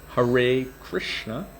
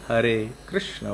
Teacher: So, and then of course, you've got the Americanized pronunciation of Mahamantra, Hare Krishna, versus the Indian one, Hare Krishna, which is a rolled R